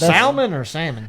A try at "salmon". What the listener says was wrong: It's not salmon. It's salmon. The L silent. I even know that. The L is silent.